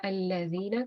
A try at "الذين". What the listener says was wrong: ला को हमने लंबा नहीं करना, ठीक है।